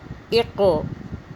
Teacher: حمزہ قاف زیر اق، قاف پہ قلقلہ ہے، جھٹکا ہے